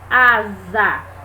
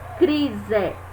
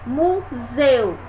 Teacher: eu só tenho um s então este S vai assumir o som de z